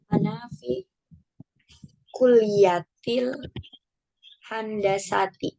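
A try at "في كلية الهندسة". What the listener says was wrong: Betul, kuliatil handasati.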